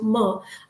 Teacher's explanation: How am I producing that sound? My lips are in contact. There is a voicing, going on.